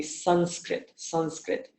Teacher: So for example, you have sa, and on top of that sa, you have that dot for the Anuswara, and then skrit, so it's Sanskrit. Now that Anuswara will take on the same shape of the mouth as the sa that follows it